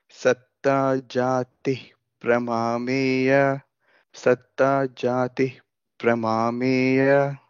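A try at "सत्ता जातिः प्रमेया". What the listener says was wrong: Jatif. You have to pronounce that visarga as f. Satta Jatif Pramameya.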